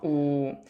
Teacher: 혀가 상대적으로 뒤에 오는 후설 모음이면서 우 발음할 때 입술이 동그래지는 원순 모음이면서 우 혀의 높이가 위쪽에 오는 고모음이 되는 거겠죠